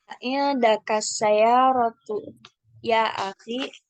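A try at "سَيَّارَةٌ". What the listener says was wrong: Saya rotun ditanwin.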